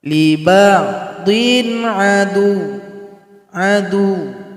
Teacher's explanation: Jadi jangan dipanjangkan. Adu, itu salah. Jadi cuma ditekan saja. Adu, cuma tasydid.